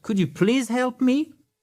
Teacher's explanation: on remonte l'intonation à la fin. Car c'est une phrase à laquelle on peut répondre par yes ou par no.